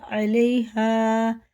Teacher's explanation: الف سے پہلے زبر ہے تو یہ حرف مدہ ہے، اسے کھینچ کے پڑھیں گے ایک الف کے برابر